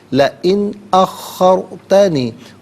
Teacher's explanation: را ساکن ما قبل خا پر زبر، را کو پر کر کے پڑھا جائے گا را ساکن کو